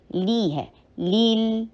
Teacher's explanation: फिर कसरा के लिए ई की साउंड करनी है, लिल नहीं होगा, लिल की साउंड नहीं है , लाम कसरा लाम, लिल नहीं है, ली है, लील, ली